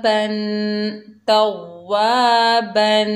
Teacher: बा के ऊपर दो ज़बर की तनवीन है, तनवीन में गुन्ना होगा